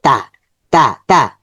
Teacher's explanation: তা এটা একটু নর্মাল সাউন্ড হচ্ছে তা, জিহ্বার আগা উপরে দাঁতের গোড়াতে লাগবে